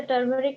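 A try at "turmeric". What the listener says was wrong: हाँ टर्मेरिक नहीं टर्मिक होता है ना, टर्मेरिक, हाँ ठीक है।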